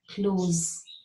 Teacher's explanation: What you have to say is close with a Z sound.